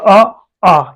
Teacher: आ ये हमारा जो ध्वनि निकलता है ये हम लोग कंठ से निकलता है